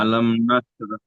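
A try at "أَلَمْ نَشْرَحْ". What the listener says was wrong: বড় হা উচ্চারণ করেন না, রহ। আলাম নাশরাহ লাকা সাদরাক।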